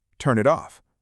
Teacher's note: It doesn't sound like three separate words at all. It sounds like one word. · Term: linking